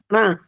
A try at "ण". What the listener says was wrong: अण, अ क्यों बोलते हो साथ में? अ क्यों आ रहा है? सिर्फ ण ण ण, बस माइक बंद कर दिया करो जब बहुत मैं बोलता हूँ, फिर उसके बाद दोबारा पीछे दोहराओ मत।